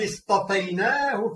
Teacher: أبدلت التاء طاء لتناسبها مع الصاد في الإطباق